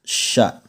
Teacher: Huruf sya itu ternyata pengucapannya adalah terletak pada bagian tengah lidah dan di bagian tengah langit-langit mulut paling atas.